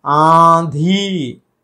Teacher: आंधी, आ, नाक से, आंधी ये सही है